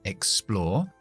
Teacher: Explore es un verbo, por lo tanto vamos a acentuar la segunda sílaba. Explore. La X tiene que ser KS porque está al final de sílaba.